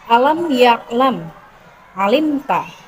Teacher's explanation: Bunyi huruf lam keluar dengan menggerakkan semua lidah dan bertemu ujung langit-langit.